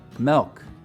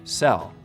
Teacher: for really distinctive features to develop over here here's something interesting in some utah accents though some front vowels get lowered before l sounds